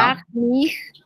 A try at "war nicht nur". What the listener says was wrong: Te comiste una palabra. War nicht.